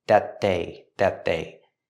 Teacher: We see the T at the end of that linked to the next sound, that they. Make a stop T with that at the end and link to the next word, they.